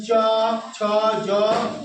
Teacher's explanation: এই যে জিহ্বাটা যে উপরে যে সারা তালুর মাধ্যমে, যেমন চ, ছ, জ, এইসব হচ্ছে তালুক ধ্বনি।